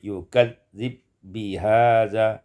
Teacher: yukadzibu bihadza, idghamul ba fil ba, diidghamkan ba pada ba menjadi yukadzib bihadza.